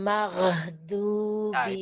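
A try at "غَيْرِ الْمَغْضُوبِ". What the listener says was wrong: itu masih diangkat lagi, Bu ya. Jangan diangkat, jangan buru-buru diangkat ya. Jadi sempurnakan dulu. Ditekan dulu, Bu. rokhwah, ini rokhwah ya. Rokhwah itu tidak apa namanya? Tidak akan habis kalau kita sukun.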